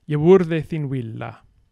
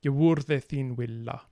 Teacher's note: th, and actually all fricatives, are voiced between vowels or sonorants. So yewurde, so R is a sonorant.